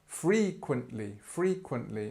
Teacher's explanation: so free this is where the stress is